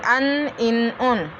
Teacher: ज़बान का किनारा ऊपर के सामने के एक नुकीले दांत से लेकर दूसरे नुकीले दांत के मसूड़ों से अदा होता है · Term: नून